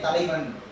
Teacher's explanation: இடையில வரப்ப ஒரு மாத்திரையா குறைந்து ஒலிக்கும் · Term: ஐகார குறுக்கம்